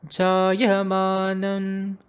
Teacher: It either goes as jayamanam jayate, right, where the ja is brought in a lower pitch. Note that only the ya, the akshara ya, comes in a high pitch. The rest of these syllables are in middle pitch.